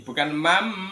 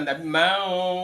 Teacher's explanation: Ikhfa itu disamarkan ya, samar antara bunyi nun yang mati sama huruf yang di depannya. Jadi samar-samar antara nun sama fa itu menjadi seolah-olah berbunyi mim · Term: ikhfa haqiqi